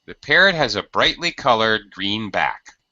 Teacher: it starts to go down and then it starts to rise back up